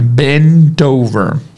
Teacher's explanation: Esse T do bent vai se juntar com a vogal do lado.